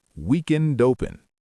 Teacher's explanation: link the D at the end of weekend with the O at the beginning of open.